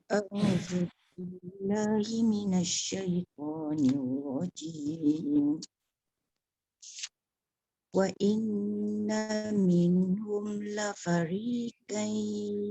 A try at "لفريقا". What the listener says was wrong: Fariqai, jangan kai, qoi tebal.